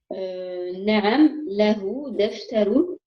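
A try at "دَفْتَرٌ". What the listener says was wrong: Deftaroun. Apprends à mettre les ténouines quand il y en a. prononcer.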